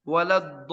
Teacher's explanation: Lam yang sakinah yang pertama hilang.